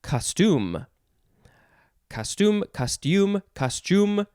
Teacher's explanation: you would emphasize the second syllable